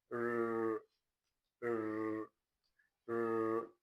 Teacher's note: This sound is described as voiced alveolar retroflex. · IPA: /r/